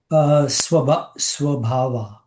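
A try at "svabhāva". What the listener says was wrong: Swa, yeah, you want to say swa. SW. So SV, svabhava. Yeah, I don't think anything in modern India, usually you don't have any V's, right? It's usually W. Everything reverts to that.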